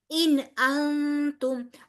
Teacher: اگلا والا نون اس کے آگے تا جو ہے وہ حروف حلقی میں سے نہیں ہے، لہٰذا یہاں پر غنہ ہوگا